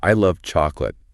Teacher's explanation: Even if I and chocolate are quick, love probably gets a bit more punch.